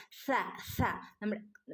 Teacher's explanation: പല്ലിന്റെ ഇടയിലൂടെ നാവിന്റെ ഇടയിലൂടെ കാറ്റ് ഇങ്ങനെ പുറത്തേക്ക് വരുന്ന രൂപത്തിൽ ആവണം നമ്മൾ സ പറയേണ്ടത്